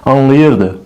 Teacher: Nəyə görə biz qeyd etmişdik ki, zaman şəkilçiləri vurğu qəbul eləyir, anlayırdı. Vurğu düşür ır-ın üzərinə